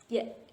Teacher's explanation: Padahal yang benar itu ja, nggak ada jesnya gitu. Itu kan tengah lidah bertemu dengan langit-langit atasnya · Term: jim